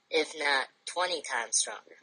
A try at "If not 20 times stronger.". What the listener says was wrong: Put more emphasis on 20. If not 20 times stronger. More emphasis. If not 20 times stronger. Slow it down.